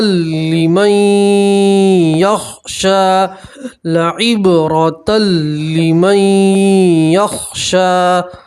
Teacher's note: نون ساکن کو آپ نے یا کے اندر ملا دیا، تب یہ نون نہیں پڑھیں گے، میم کو یا سے ملائیں گے اور گننا کے ساتھ پڑھیں گے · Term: نون ساکن کا ادغام